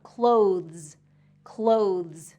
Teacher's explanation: This one is really tricky because it has that THZ sound, clothes, clothes. So that TH has to get between the teeth, but then pulled back really quickly for the Z sound.